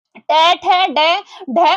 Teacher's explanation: ट, ठ, ड, ढ, और यह सब मूर्धा से बोले जाते हैं।